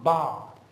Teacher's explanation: clearly in ba I sensed some additional vibration